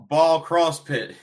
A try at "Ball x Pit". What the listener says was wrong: No, it's Ball Pit. The X is silent. It's silent. All right, it's like Hunter x Hunter. You don't say Hunter x Hunter.